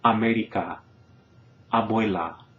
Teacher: keep your tongue in that low and central position, right? Plenty of space in the mouth for the sound, and to pronounce that vowel crisply, whether it's stressed or not